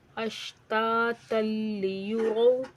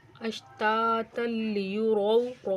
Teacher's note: تا کو لام سے ملا کر پڑھیں گے، ادھر وقف نہیں کریں گے.